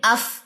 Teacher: فا کو ادا کرتے ہوئے آپ کا ہمس جاری ہو، آپ کا سانس جاری